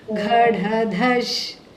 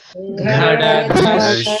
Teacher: I didn't hear anybody aspirate. Nobody breathed over that.